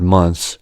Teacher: With the th consonant cluster, as in the word months, we can just omit the th sound.